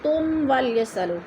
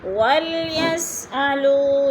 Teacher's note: میم ساکن کے بعد واو آ گیا تو ادھر اظہار شفی